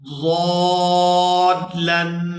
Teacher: یہاں تنوین پر اخفا کریں گے، آواز نا کے اندر جائے گی۔ 2 سے 3 سیکنڈ آواز کو نا کے اندر روک کر رکھیں گے۔